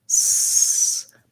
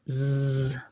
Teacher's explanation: sound z so the only difference between these two is that when i say the s sound s my voice isn't on when i say the z sound z my voice is on